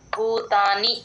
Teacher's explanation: సర్వభూ భూకి మహాప్రాణం ఉంది గమనించండి